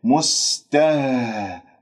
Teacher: الهاء الساكنة تتجلى فيها الصفات، الاهتزاز راح يكون واضح من أقصى الحلق